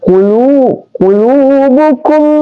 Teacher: Berarti di sini ada idgham mimi. Jadi kita diidghamkan, mim sukun ditekan dan dimasukkan di mim.